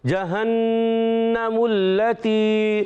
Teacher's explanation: هذه جہنم التی غنہ پورا کریں گے. نون مشدد غنہ ہوگا.